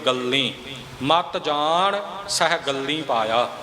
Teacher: ਗਗੇ ਦੇ ਉੱਪਰ ਅਦਿਕ ਵੀ ਆਵੇਗਾ ਤੇ ਲੱਲੇ ਦੀ ਬਿਹਾਰੀ ਨੂੰ ਥੋੜਾ ਅਨੁਨਾਸਕੀ ਨੱਕ ਵਿੱਚ ਆਵਾਜ਼ ਬੋਲ ਕੇ